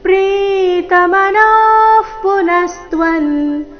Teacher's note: ನ ದೀರ್ಘ ಹೇಳಿ ನಂತರ ವಿಸರ್ಗದ ಉಚ್ಚಾರಣೆ